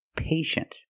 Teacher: the first syllable is a long a like day and pay